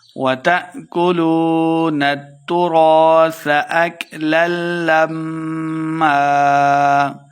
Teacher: وَتَأْكُلُونَ التُّرَاثَ أَكْلًا لَمًّا۔ حمزہ ساکن ہے تو جھٹکے کے ساتھ پڑھیں گے۔ وَتَأْكُلُوا واو مد ہے، دو حرکات لمبا کر کے پڑھیں گے۔